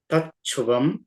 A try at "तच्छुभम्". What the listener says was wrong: భకార మహాప్రాణ పలకండి. మహాప్రాణ రావాలి.